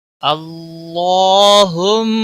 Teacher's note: اللہ کے لام کو موٹا پڑھیں گے، اس کے اوپر کھڑی زبر ہے، ایک الف کے برابر کھینچ کر پڑھیں گے، میم مشدد پر گننا ہوگا.